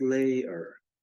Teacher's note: we even sometimes pronounce y so weakly or muted that it's essentially silent · in normal speech most of us don't pronounce layer with a strong Y sound, but almost layer, which can be interpreted as having a long A in this position and the Y not contributing any sound at all.